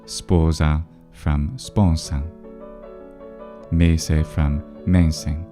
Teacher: the N before S was nasalized into the preceding vowel, even in antiquity in classical Latin